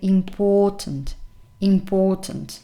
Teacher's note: Pay attention to the fact that the stressed syllable is the second one. That's why in the phonemic transcription you have the stress here.